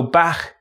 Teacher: Sometimes only the friction is heard, so 'back' can sound like 'Bach'.